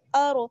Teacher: रॉ जो है साकिन है और उससे पहले हमजा पर क्या है जबर, इसलिए रॉ को मोटा पढ़ेंगे पुर पढ़ेंगे